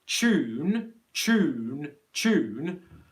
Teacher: two ways you can think about this word you can either think about the word tune as a cha sound as in cheese plus a long oo